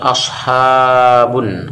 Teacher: Asha dinamakan dengan mad tabi'i alif, panjang bacaan 2 harokat.